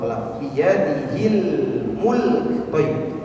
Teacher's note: jangan sampai huruf lam kita pantulkan cara membacanya karena lam bukan termasuk huruf qolq